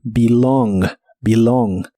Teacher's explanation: El verbo pertenecer en el presente de inglés es belong, la E se pronuncia como I